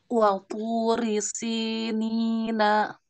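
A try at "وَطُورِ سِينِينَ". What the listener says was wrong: Baik, naknya tipis. Na, bukan no. Na. Wa turi sinina.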